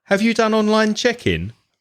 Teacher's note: make sure your voice goes high and you sound much more polite